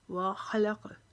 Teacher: یہاں پر ہا موٹا پڑھیں گے، لام باریک پڑھیں گے، قاف کو چونکہ اوپر جزم آ گیا یہاں پر قلقلہ کریں گے